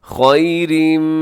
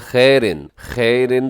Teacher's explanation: یہاں ادغام ہو رہا ہے کیونکہ خیرن کے آخر میں تنوین ہے اور تنوین کے فوراً بعد میم ہے جو کہ یرملون کا ہے۔